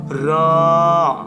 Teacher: জিহ্বার আগা উপরের দাঁতের গোড়ায় কম্পন সহ